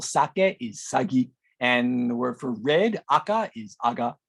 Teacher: the Yonaguni has a feature where the k sound in between two vowels is voiced and becomes a g sound